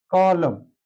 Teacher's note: এখানে দেখা যাচ্ছে কয়ের সাথে অ আছে, এটা অটা বজায় আছে, কিন্তু মাঝের যে লয়ের সাথে অটা ছিল এটা পরিবর্তিত হয়ে ও হয়ে গেছে, অর্থাৎ অ ধ্বনির উচ্চারণ এখানে ও হয়ে গেছে, অর্থাৎ অ সংবৃত বিবৃত ছিল হয়ে গেছে সংবৃত।